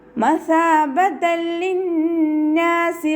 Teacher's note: തെൻവീനിലുള്ള നൂനിൻ്റെ സൗണ്ടിനെ ലാമിലേക്ക് നമ്മൾ ലയിപ്പിച്ചു കൊടുക്കുക, പക്ഷെ മണിക്കാതെ ഉച്ചരിക്കുക കേട്ടോ. ലയിപ്പിക്കണം, പക്ഷെ നമ്മൾ മണിക്കാതെ ഓതി കൊടുക്കുക.